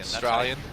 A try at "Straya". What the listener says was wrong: There's no AU, it starts with S. S-T-R-A-Y-A-N.